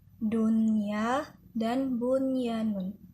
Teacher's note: Nah, apabila ada nun sukun dan tanwin bertemu dengan salah satu huruf idgham bi gunnah dalam satu kalimat, maka itu tidak disebut dengan hukum bacaan idgham bi gunnah, melainkan izhar wajib. Artinya, cara membacanya juga tidak didengungkan dan tidak ditasydidkan